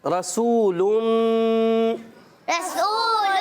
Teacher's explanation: را کو پر کر کے پڑھیں گے کیونکہ زبر ہے. واو مدہ ایک الف کھینچ کے پڑھیں گے